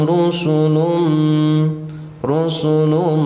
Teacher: di sini tidak ada mad Ya tidak boleh panjang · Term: qasar